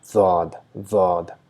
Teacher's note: And we have Daad, which is written same as Saad, but our side of the or side blades of our tongue are touching the molars, the grinding teeth, and we try to produce a sound D, but because of the touch, small slight sound of Z is produced, Daad, Daad.